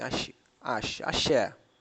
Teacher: A sílaba tônica é no e, ela terminada em vogal. Então ela é acentuada.